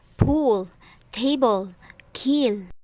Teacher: it's aspiration po because you feel the air after the breath